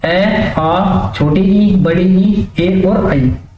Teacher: जिनका उच्चारण करने में हमारे होठ गोलाकार नहीं होते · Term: आवृतमुखी